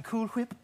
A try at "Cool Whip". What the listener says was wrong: You're putting a lot of emphasis on the H.